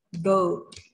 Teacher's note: long vowel-nya kategorinya hanya di General American karena o-nya yang panjang. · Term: long o